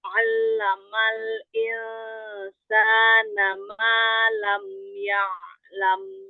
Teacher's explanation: Huruf ain itu ngambil makhraj pertamanya aja. Jadi harokat fathahnya itu udah al-jauf, udah udah bunyi udah bukan punya ain lagi.